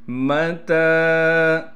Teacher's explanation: تا پر کڑا زبر ہونے کی وجہ سے تا کو 1 الف کی مقدار کھینچیں گے، تا کے بعد یا بھی لکھی ہوئی ہے لیکن اس کو ہم نہیں پڑھیں گے۔